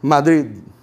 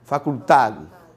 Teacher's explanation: Vocês entendem que vocês vão pronunciar o D, mas vão quase que cortar ele no meio? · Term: D final